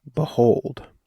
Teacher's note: one unstressed syllable followed by a stressed syllable